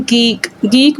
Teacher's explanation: a consonant produced by raising the back of the tongue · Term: विलर्स